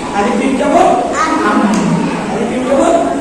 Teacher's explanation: মিম বর্ণটা উচ্চারিত হয় ঠোঁটে শুকনো জায়গা থেকে